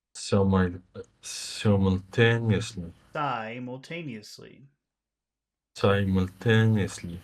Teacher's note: Not si, but sigh, sigh, two sounds.